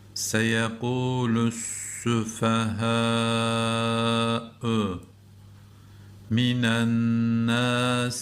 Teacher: Buradaki nun nunu müşeddede dediğimiz bu şeddeli nunda tutuyoruz.